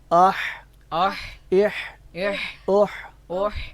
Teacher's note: ہماری آواز گلے کے درمیان سے نکل رہی ہے، عین کی بھی اور ہا کی بھی